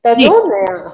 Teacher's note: दो पे थोड़ा सा भार हमें देना है बोलते समय जी